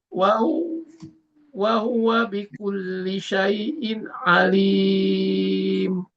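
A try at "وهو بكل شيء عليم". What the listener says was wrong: Syai'in, hati-hati nggak berhenti suaranya. Syai'in alim. Mesti berhenti suaranya itu, Pak. Di in-nya. Syai'in jadi masih ngalir suaranya itu, Pak. Wa huwa bikulli syai'in alim.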